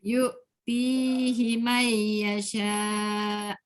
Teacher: Ti panjang sebab ada ya. Hi tak boleh panjang sebab tak ada ya.